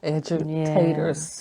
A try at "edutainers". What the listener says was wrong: Edutainers, not taters.